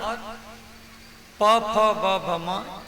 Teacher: और प फ ब भ म ये ओष्ठ वर्ण, दोनों होठ जब लगता है तो ये 5 अक्षर की उत्पत्ति होता है